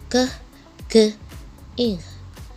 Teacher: Velar sounds are produced at the velum or soft palate, such as k, g, ing.